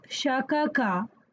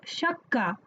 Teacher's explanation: We will not say it as shakaka, but we rather say it as shakka. The two kas got fused together and there is a shadda on one of the kas. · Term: geminate